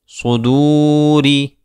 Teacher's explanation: را کو باریک کیا جائے گا کیونکہ را کے نیچے زیر ہے